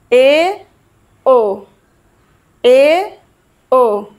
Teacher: अर्धसंवृत स्वर, जिनके उच्चारण में मुख थोड़ा सा खुलता है।